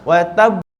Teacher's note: Jadi bila kita berhenti itulah bergabung syiddah dengan qalqalah. Sebab tu ada kena ada delay, kena putuskan suara kejap. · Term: qalqalah akbar